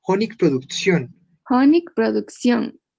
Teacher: Recuerda la T antes de las varias vocales. Suena TS.